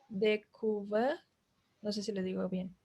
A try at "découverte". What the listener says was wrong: Oui, découverte, parce que c'est un E final, es femenino, découverte.